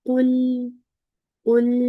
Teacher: قاف موٹا ہے، لام پتلا ہے